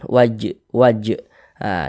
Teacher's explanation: huruf Jim termasuk salah satu huruf Qalqalah maka pantulkan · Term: qqalah sugro